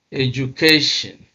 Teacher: You can see that stress is on the second syllable from the end or the third syllable from the beginning.